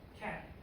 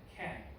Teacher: 자음은 똑같이 말했고 제가 말한 거의 차이는 모음의 길이였습니다. 실제로 영어 화자들은 이 어말 자음이 voiceless인지 아니면 voiced인지를 판별할 때 그 자음을 듣지 않고 그 앞에 있는 모음을 듣습니다.